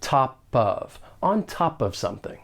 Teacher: For pronunciation, surprise, surprise, more linking may occur. We can link the final consonant sound in top with the beginning vowel sound in of.